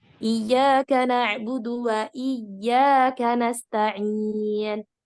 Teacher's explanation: Kalau nyebutin huruf waw itu otomatis nggak akan tebal. Lidahnya tetap aja turun, datar.